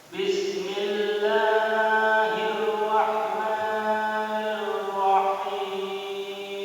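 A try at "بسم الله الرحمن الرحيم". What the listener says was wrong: Ya, lahnya aja dikit doang, kepanjangan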